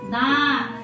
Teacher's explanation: अनुनासिक, नाक की सहायता भी लग रही है